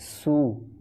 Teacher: যায় যখন আমরা সিন ওয়াও পেশ সু বলবো এটা হবে সু এটা সু মোটা হবে না যদি মোটা হয়ে যায় তখন এটা সদ হয়ে যাবে